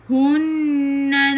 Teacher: Nun ada sabdu tekan ke dalam nun dan dengan wajibul gunnah